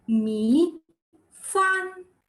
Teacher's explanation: The falling and up tone, that is the third tone, and the fourth tone, the falling tone.